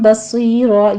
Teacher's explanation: تنوین کا قاعدہ اقلاب ہو رہا ہے، 2 کاؤنٹ کریں گے، صاد کو پر پڑھتے ہوئے آگے یائے مدہ ہے اور آگے ہم وقفے ابدال کر لیں گے، را کو مفخم پڑھتے ہوئے 2 کاؤنٹ کر لینا ہے